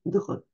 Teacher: avec un R qui racle quand même pas mal